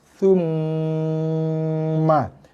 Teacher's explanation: Itu bibir kena kacip. Dengung di hidung juga, mesti 2 harakat minimal ataupun lebih juga. Tapi bibir kacip. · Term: mim tasydid